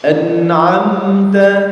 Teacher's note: Yaitu apabila mim sukun bertemu selain mim dan huruf ba. Dan cara bacanya mim sukunnya harus dibaca jelas tanpa ditahan, tanpa dijeda. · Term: izhar syafawi